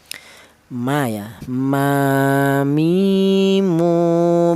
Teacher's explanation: Ba dan mim ini dihasilkan dari kedua bibir yang rapat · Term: huruf mim